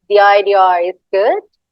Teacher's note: To make it more native, you kind of put R in the middle of idea and is, but it's like slightly.